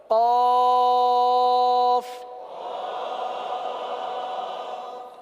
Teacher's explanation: زبان کی جڑ اور تالو کا نرم حصہ، یہ قاف کا مخرج ہے